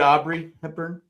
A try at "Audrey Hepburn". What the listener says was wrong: You said Aubrey with the B.